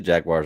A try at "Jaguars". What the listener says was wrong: No, you said Jagwires. Jaguars.